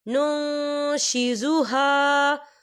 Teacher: تو ہم یہاں اکفا کریں گے، نون ساکن کی آواز کو ناک میں چھپائیں گے۔